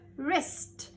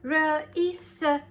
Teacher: Wrist. W is silent. I only say the R sound.